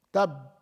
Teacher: pronouncing the Ba with the Shadda, Tab, there is no flow of any air.